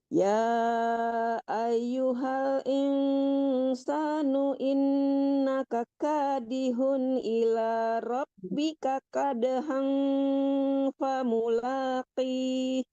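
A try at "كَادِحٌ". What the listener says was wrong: Ya, ha kecilnya, ha ya. Kadihun, jangan kadihun ya. Dibedakan antara ha kecil dan ha besar. Kadihun ila rabbika kadahan. Nah, itu ha kecil dua-duanya ya.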